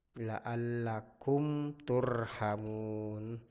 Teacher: hukum bacanya adalah izhar syafawi, la'allakum Kenapa izhar syafawi? Karena mim sukun ketemu dengan huruf ta. Cara membacanya itu dibaca jelas.